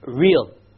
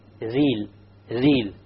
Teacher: The English R comes from the middle of the tongue, and the Arabic ra comes from the tip of the tongue. It is very important that when we pronounce the R in Arabic, the ra in Arabic, we do not roll the tongue.